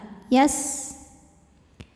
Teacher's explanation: Huruf sin punya sifat yang tidak memiliki lawan namanya sofir. Artinya ada desis seperti suara ular.